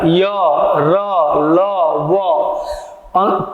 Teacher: पूरी तरह से जीभ का टच नहीं हो रहा है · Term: अंतस्थ व्यंजन